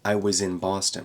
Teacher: we're going to connect I was in into one little phrase and we're going to reduce that uh in was